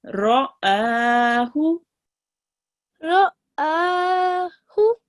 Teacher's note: only the alif will be the longest, 2 seconds long. The ra and the hu will be just 1 second long.